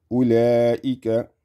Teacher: The waw is having a sukun on top of it. This is going to be a silent waw. This waw is saying that I'm not here to practically do anything.